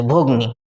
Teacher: মধ্যস্বল্লপের ক্ষেত্রে আদি স্বরের ওপরে তো শ্বাসবায়ু প্রয়োগ হবে বা শ্বাসাঘাত প্রয়োগ হবে, তাই মাঝেরটা লুপ্ত হবে।